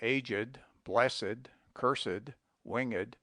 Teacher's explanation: as for instance in aged blessed cursed winged used as adjectives the E must by no means be suppressed